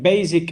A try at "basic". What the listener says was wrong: Okay, this word, it is not za sound, it is sa sound. Basic, sa, not basic.